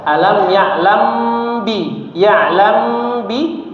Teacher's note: Ikhfa syafawi ya. Bibirnya yang paling mudah itu bibirnya dirapatkan saja tapi didengungkan, dipanjangkan ya. Ghunah mutawalah gunahnya dipanjangkan.